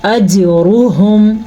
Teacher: را کو ہم پر پڑھیں گے، را پہ پیش کی وجہ سے. ہا کے تلفظ کا خاص خیال رکھنا ہے، یہ ہا سینے سے نکلتا ہے. · جیم پہ کلکلا ہو رہا ہے، را کو ہم پر پڑھیں گے، را پہ پیش کی وجہ سے.